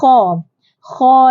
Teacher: sifatnya Hamas ya Hamas terlepas nafas ataupun angin